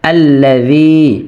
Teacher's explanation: যেমন আলিফ লাম জবর আল, বা হামজা লাম জবর আল, লাম জবর লা, আল্লাহ, জাল ইয়া জের জি, পাতলা হবে এবং এক আলিফ মাদ হবে, কেননা জেরের বাম পাশে জসমলা ইয়া আসলে এক আলিফ টেনে পড়তে হয়।